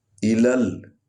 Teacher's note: الل ایبیلی، الل، لام کو لام میں ملائیں گے کیونکہ اس پر لام پر جو ہے وہ جزم ہے۔